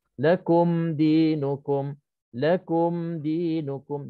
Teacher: Kita dah kurangkan mim untuk idgham mithlan saghir, ba untuk ikhfa syafawi, maka di sini mim mati bertemu salah satu 26 huruf tadi, maka hukumnya izhar syafawi. Kena izhar, kena terang dan nyatakan mim mati di sini.